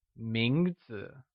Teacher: mingzhu is pronounced with the mid rising tone